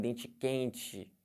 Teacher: O carioca já vem dente quente, né? Com esse chiado típico.